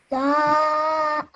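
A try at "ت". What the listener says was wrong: Make sure you don't say da because that would make it a thick sounding letter, whereas this is just a simple thin sounding letter. Ta.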